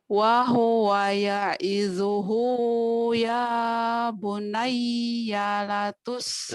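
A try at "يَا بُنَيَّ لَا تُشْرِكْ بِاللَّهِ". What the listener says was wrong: Lanya panjang. Ya bunayya la tusyrik billah sampai bawah.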